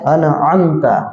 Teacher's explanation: ان کا آ یہ جو ہے وہ شروع حلق سینے کی طرف سے ادا ہوتا ہے، اور ام جو ہے یہ بیچ حلق سے ادا ہوتا ہے